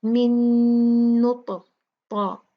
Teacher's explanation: یہ دیکھیں اس پہ تشدید آئی ہے تو ہم نے اس کو اچھے سے شدہ دے کے جو ہے دیکھا ہم نے، تو پھر ہم نے اس کو اچھے سے غنہ دے کے پڑھنا ہے. من نطفہ، طا جو ہے یہ قلقلہ ہوگا، اس کو ہلا کے پڑھیں گے